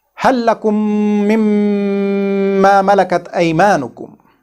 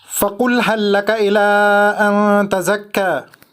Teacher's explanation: we merged this LAAM Saakinah of hal into the next lam